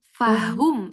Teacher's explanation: Jangan fahom ya, dhammah mencucu sempurna.